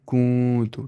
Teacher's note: नाक में आवाज़ छुपानी है क्योंकि यहाँ पे नून साकिन के बाद ता आ रहा है, जो ता है वो हर्फ इख्फा में से है।